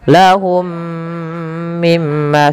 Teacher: Mim yang pertama masukkan mim kedua dan ditahan sepanjang 2 harokat. Kemudian mim yang kedua yang itu ditahan yaitu adanya gunnah. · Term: idgham mimi